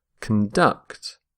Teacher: stress the second syllable